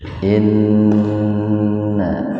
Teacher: Gunna itu mendengung ya. Nun bertasdid itu gunna.